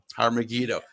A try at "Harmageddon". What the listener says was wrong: You need to put the stress right. You see, Harmageddo. The stress. Not Megiddo. Megiddo. It's like the stress is on the gi, not